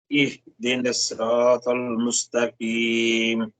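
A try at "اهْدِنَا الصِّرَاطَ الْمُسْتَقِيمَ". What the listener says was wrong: اچھا یہ آپ نے پڑھا مستقیم, یعنی یہ کاف ہو جاتا ہے, اس کو قاف سے اہدنا الصراط المستقیم. مستقیم.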